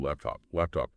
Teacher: Since this is a yes no question, your voice usually goes up slightly at the very end on the word laptop. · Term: rising tone